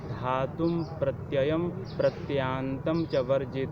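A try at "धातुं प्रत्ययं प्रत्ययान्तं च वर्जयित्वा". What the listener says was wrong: दो य नहीं भाई, य बोलो तो, वो आवाज थोड़ी निकाल करके तो क्या बोल तो पा रहे हो दो य, तो क्यों फिर उधर अशुद्ध उच्चारण कर रहे हो?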